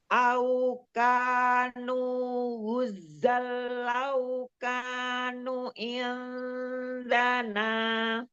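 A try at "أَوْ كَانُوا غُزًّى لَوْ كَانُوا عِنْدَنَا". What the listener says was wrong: Nu-nya ada mat. Ulang dari lau kanu. Sambung.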